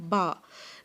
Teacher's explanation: اپنے ہونٹوں کو جوڑیں اور لفظ ادا کریں با، تاکہ آپ کے ہونٹ جو ہیں وہ پورے بند ہو جائیں